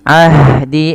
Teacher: alirkan nafas H-nya karena dia sifat hames.